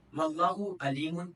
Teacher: عین کو حمزہ سے بدل دینا